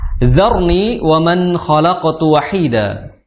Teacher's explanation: Itu makhrajnya adalah di ujung gigi seri atas ya, dipertemukan dengan ujung lidah ya. Ujung gigi seri atas ujungnya kemudian dipertemukan dengan ujung lidah. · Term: dal yang ada titiknya